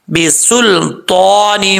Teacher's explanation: سین جو ہے وہ سیٹی کے ساتھ پڑھا جائے گا، لام جو ہے ساکن ہے، قلقلے سے بچانا ہے تو حروف مستعلیہ میں سے ہے پر پڑھا جائے گا، اور نون کے بعد چھوٹا میم ہے، یہاں پر بھی ایک الف کی مقدار غنہ کیا جائے گا۔